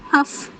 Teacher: اس کی ادائیگی میں تھوڑی فسفساہٹ سی آواز آتی ہے اور تھوڑی ہلکی ہوا نکلتی ہے، اور اس کی مخرج میں اس کی آواز دھیرے دھیرے کمزور ہوتی جاتی ہے. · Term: صفت